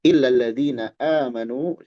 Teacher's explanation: Sini ada mad badal dua harakat